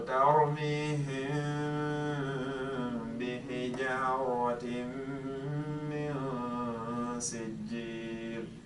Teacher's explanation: both of the letters that are involved, which is the ba and the meme, come from the same makhraj, from the same exit. And the same exit is the two lips. · al-ikhfa ash-shafawi, it has to do with the fact that I hide the meme. And ash-shafawi basically means and has to do with the fact that both of the letters that are involved, which is the ba and the meme, come from the same makhraj, from the same exit.